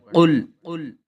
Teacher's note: قاف کو موٹا کر کے پڑھنا ہے